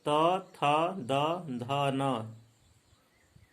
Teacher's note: त वर्ग का उच्चारण स्थान क्या है? दंत है। जिह्वा दंत को स्पर्श करती है।